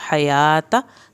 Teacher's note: हा को हल्क से पढ़ो